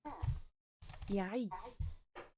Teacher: c'est le fameux son guttural, enfin du fond de gorge. Ah, comme ça.